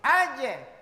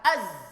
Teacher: kalau huruf ja harus dipantulkan. Kalau za tidak perlu dipantulkan, ditahan. Az. Az, tetap senyum.